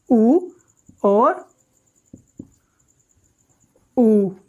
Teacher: छोटा ऊ और बड़ा ऊ, ये दोनों ओष्ठ से बोले जाते हैं।